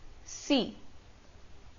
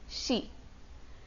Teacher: When s and s are followed by e, तो इनका sound शी होता है इंस्टेड ऑफ सी। होना सी चाहिए according to the रोमनाइजेशन, but they sound more like शी, श वाला साउंड, शी